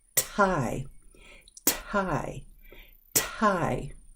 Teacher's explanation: because the T is in the beginning of the word you'll notice that air forced out